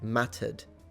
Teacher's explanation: when a word ends with an R, she doesn't pronounce it